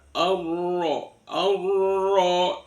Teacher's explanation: karena berharakat fatkhah maka rnya dibaca tafkhim